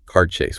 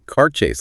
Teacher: noting the equal stress on both parts of this compound noun